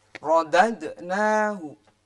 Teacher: Jadi ro-nya benar-benar tebal. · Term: tafkhim